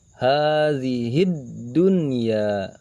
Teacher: Jadi jika dimasukkan ke dalam hukum tajwid, huruf alif lam kita baca samar, bahkan tidak terlihat, masuk langsung ke dalam huruf dal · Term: idgham syamsiyah